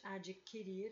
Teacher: Na palavra adquirir, o U não é pronunciado